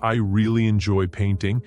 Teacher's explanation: the stress is on really and painting